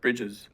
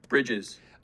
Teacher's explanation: You can compare that with another pronunciation of the same word, which you might use as well. Instead of that barred I, you might use that cap I vowel. This sort of looks like a small capital I.